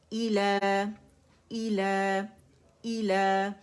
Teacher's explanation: مکسورہ لام کی آواز کو 2 کاؤنٹس کے لیے اوپر کھینچ رہی ہے کیونکہ میں ابھی اس کو آگے نہیں پڑھ رہی اس لیے رول نہیں بنا رہی جسٹ مد اصلی پہ میں اسے ختم کر رہی ہوں ٹھیک ہے.